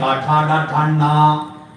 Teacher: നാവിന്റെ അറ്റം അണ്ണാക്കിന്റെ മൂതാവ് കുത്തി പറയുന്ന അക്ഷരമുണ്ട്. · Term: മൂർധന്യം